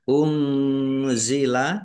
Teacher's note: nun sukun bertemu dengan huruf za bacaan ikhfa dibaca samar-samar.